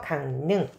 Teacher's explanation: 강능 같은 경우도 이응이 어디랑 만납니까 리라고 만 그래서 강능 자 리을이 아닌 자음 뒤에서 리을이 니은으로 교체되는 현상이 되는 거예요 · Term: 비음화